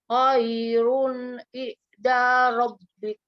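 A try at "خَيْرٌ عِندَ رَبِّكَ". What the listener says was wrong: Oke, nun ketemu dal ikhfa kan? Dengungnya lupa. Ayo lagi.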